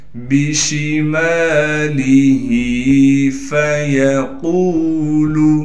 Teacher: صاف کر کے پڑھیں گے، یا کو بغیر کھینچے پڑھنا ہے، قاف کو واو مدہ سے ملا دیں گے اور قاف کو موٹا بھی کر کے پڑھیں گے · دیں گے اور قاف کو موٹا بھی کر کے پڑھیں گے، قاف کو ایک الف کی مقدار کھینچیں گے